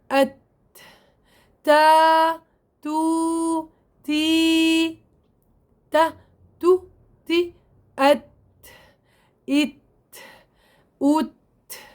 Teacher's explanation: انفتاح للوترين الصوتيين وعدم اهتزازهما وجريان كثير لهواء النفس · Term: حرف التاء